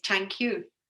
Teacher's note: we can also hear it mispronounced as tank we're not getting the th sound at all